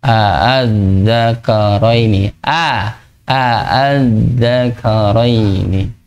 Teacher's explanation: Jadi nggak dibaca panjang, hanya dibaca hamzah yang keduanya tapi dengan tekanan nada rendah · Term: tashhil